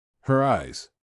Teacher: this word may be pronounced with r if the word that comes after the word is a vowel. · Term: Linking R